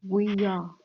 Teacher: in between the E and the A, you have this Y, like this kind of a Y sound, like like yes and yesterday. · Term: linking sound